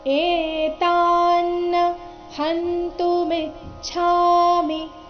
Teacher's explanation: ಇಲ್ಲಿ ಎ ಮತ್ತೆ ತಾ ಎರಡು ದೀರ್ಘ ಬರಬೇಕು ನ ಕ್ಕೆ ನ ದ ಒತ್ತು ಇದ್ದಾಗ ಕಾರಣ ಸ್ವಲ್ಪ ಒತ್ತಿ ಹೇಳಬೇಕು ಏತಾನ್ನ